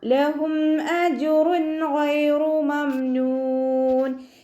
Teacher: ജീമ് കൽക്കലയുടെ letter ആയതുകൊണ്ട് full സുക്കൂന് കൊടുക്കാൻ ശ്രദ്ധിക്കുക